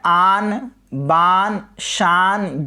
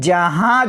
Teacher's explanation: नाक से आवाज़ भी आ रही है और क्या है, नून ज़ाहिर नहीं है बल्कि छुपा हुआ है, तो क्या हो जाएगा, नून गुन्ना।